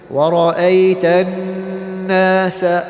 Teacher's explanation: Okay, so if you have a noon or a meme that has a shadda, like this noon has a shadda, then the rule of غُنَّة applies. That means you hold the noon, you press on it for 2 counts